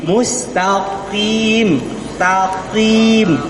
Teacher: di ujung lidahnya disentuhkan ya didekatkan kepada daging ya daging yang gandul-gandul itu